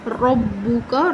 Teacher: وَإِذْ قَالَ رَبُّكَ، قاف حرف مستعلیہ ہے، پر پڑھیں گے، الف مدہ، ایک الف کی برابر لمبا کریں گے، ربک را زبر کی وجہ سے پر پڑھی جائے گی